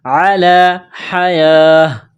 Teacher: جب یہاں پر وقف کریں گے تو گول تا کو ہا سے تبدیل کریں گے